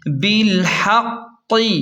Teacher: با لام زیر بل، حا قاف زبر حق، قاف زیر قی، بالحق، ہا کو حلق کے درمیان سے صاف نکالیں اور قاف پر شد ہے اس لیے ہا کو قاف کے ساتھ سختی سے ملائیں اور وقف کی صورت میں قاف پر قلقلہ ہوگا، یعنی جھٹکے سے پڑھیں گے۔